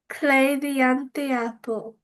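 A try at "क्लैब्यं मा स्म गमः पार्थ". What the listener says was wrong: Instead of saying breaking it apart with the ty, just think of it as one word. So say tiapo. So cle dayan tiapo.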